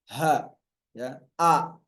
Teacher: Baik hamzah maupun ha. sama-sama dari tenggorokan paling dalam atau tenggorokan paling bawah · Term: huruf ha